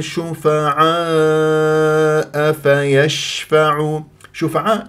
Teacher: اجتمع فيها حرف المد الالف والهمزه مد واجب متصل اربع وخمس حركات